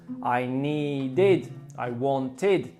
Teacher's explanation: with the id sound, we force an extra syllable on the end of the verb. So need with one syllable becomes needed.